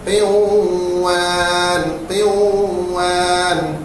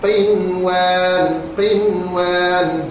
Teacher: Nun mati bertemu dengan huruf waw, idgham ma'al gunnah.